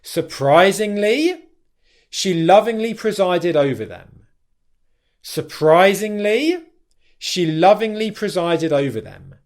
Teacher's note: Can you hear how the tonality drops there at the end? And that indicates to your listener, 1, finality, but 2, certainty and confidence in what you're saying. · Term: downwards intonation